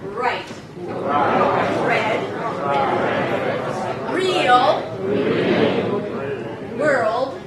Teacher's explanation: Don't forget, the body of the tongue is really tense. And the tip of the tongue is not touching anything